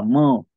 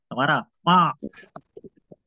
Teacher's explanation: यांचा उच्चार नाकातून होतो म्हणून त्याला अनुनासिक म्हणतात